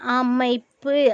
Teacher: அந்த மை வரும் பொழுது அந்த ஓசை கொஞ்சம் குறைந்து வருது அப்படி வரக்கூடிய பொழுது அது ஒரு மாத்திரை குறைந்து ஒரு மாத்திரையா வருது